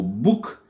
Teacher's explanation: le phonème OU. OU, un OU court dans le mot book